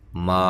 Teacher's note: ما الف مدہ ہے، ایک الف کی مقدار کے برابر لمبا کرنا ہے۔ الف مدہ کو، حروف مدہ کو جو تین ہیں، الف مدہ، واو مدہ اور یا مدہ، ان کو سب کو ایک الف کے برابر لمبا کرنا ہے۔